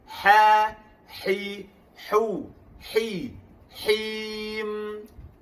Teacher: huruf ha tengah-tengah kerongkong